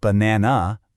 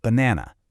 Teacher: the first and last a's become that lazy uh sound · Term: schwa